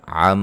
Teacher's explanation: عم میم مشدد پہ غنہ